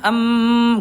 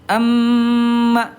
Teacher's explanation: dibaca jelas mimnya dan ditahan dua ketukan ee dua ketukan lambat. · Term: idgam mimi